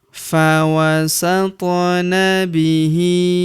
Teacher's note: Huruf th berharakat sukun kita pantulkan atau kita qalqalahkan · Huruf hi kita panjangkan dua harakat karena terdapat tanda alif kecil di bawahnya yang ini.